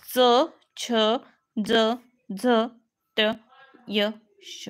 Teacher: भाग त्याला म्हणायचं टाळूचा भाग असल्यामुळे त्याला नाव आहे तालव्य ता टाळूचा भाग असल्यामुळे त्याला म्हणतात तालव्य